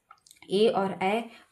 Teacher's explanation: ए और ऐ कंठ और तालु से बोला जाता है